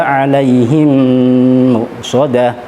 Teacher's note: Alaihim muqsadah harus kita dengungkan dengan durasi waktu 2 harokat karena idgham mithli mim bertemu mim.